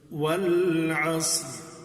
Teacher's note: یہاں صاد بھی پر ہے، والعصر، اور را بھی پر پڑھیں گے، اس لیے کہ را ساکن ما قبل صاد ساکن اور عین پر زبر ہے، اس وجہ سے را کو پر کریں گے.